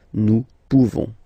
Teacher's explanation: Okay, you don't pronounce the final S.